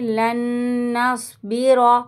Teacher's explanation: नून साकिन के बाद नून मुशद्दद है, इसलिए नून मुशद्दद को ज़ाहिर करेंगे